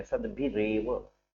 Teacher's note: सद्भिः और एव ये दो शब्द मिले, सद्भिः में विसर्ग है, विसर्ग को रा बन गया है, सद्भिः एव होना चाहिए तो सद्भिः रेव बन गया, सद्भिरेव।